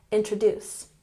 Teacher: Emphasis on the last syllable.